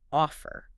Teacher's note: In offer, the stress is on the first syllable, of. The second syllable, fer, is unstressed.